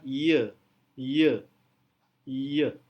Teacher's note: dalam posisi y lidah kita angkat sedikit dan saat kita mengucapkan bunyinya lidah turun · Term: voice palatal approxim